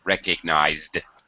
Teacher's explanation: this Z sound is a voiced sound so we just add a quick d